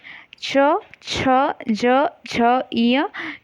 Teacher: और फिर व्यंजन च, छ, ज, झ, य जो है वो क्या है, हमारा तालु से उच्चारित होते हैं।